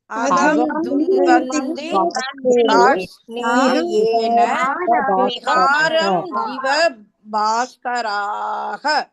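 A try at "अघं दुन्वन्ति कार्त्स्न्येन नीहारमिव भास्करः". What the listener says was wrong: भास्कराः नहीं है, करः.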